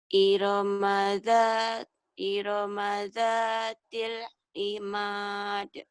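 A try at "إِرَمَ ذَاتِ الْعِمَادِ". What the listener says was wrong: Kau tuh bacanya tuh sudah bisa, cuman nadanya tuh kayak nada yang maaf ya, kayak nggak pede gitu. Seperti, kan harusnya ini Budi lagi sekolah. Ini Budi lagi sekolah. Jadi penyampaian. Ya coba ya artikulasinya dibagusin karena kau sudah bagus, sudah pinter kok.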